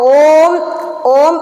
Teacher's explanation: മാറ്റം തോന്നിയോ അതായത് ഇതിൽ ചൊല്ലുമ്പോൾ തെറ്റിക്കുന്നത് അപ്പൊ ഓം ഓം എന്ന് ജപിക്കുമ്പോൾ ഓം ചുണ്ട് കൂടി വരുമ്പോഴാണ് ഓംകാരം മുഴുവനാകുന്നത്